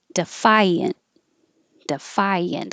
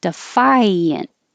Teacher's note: it's a good example of an invisible y because phi your tongue goes very high defiant and it slides